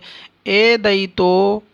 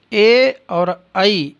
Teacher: ए और ऐ इनका उच्चारण स्थान कंठ और तालु है